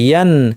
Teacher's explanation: গুন্না আমি করছি, কিন্তু গুন্নাকে বর্ধিত করছি না, স্বাভাবিক রেখেছি। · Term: স্বাভাবিক গুন্না